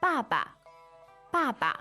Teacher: Baba is fourth tone right it's Fourth and neutral fourth and neutral that's right ba is is fourth so let's